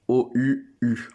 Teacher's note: c'est pas juste ou, mais ça doit être avec la prolongation. Une voyelle longue.